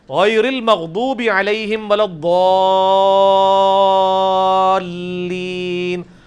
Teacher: ولضالین میں جو الف کے اوپر بڑی والی مد ہے وہ 5 الف تک کھینچی جاتی ہے, یعنی 10 حرکات کی لینتھ کے برابر. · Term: مد واجب